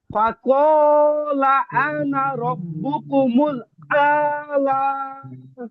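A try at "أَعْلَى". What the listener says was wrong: হ্যাঁ, টান হচ্ছে কেন ভাই? লা, ধাক্কা ধাক্কা, লা।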